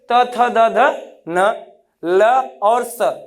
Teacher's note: जब स्पर्श करते हैं तो क्या होता है, ये दंत से कोई जब इन ध्वनियों का उच्चारण करते समय, तथा दधा न का उच्चारण करते समय जब जीवा दांतों का स्पर्श करती है तो अतः इन्हें दंत की श्रेणी में गिना जाता है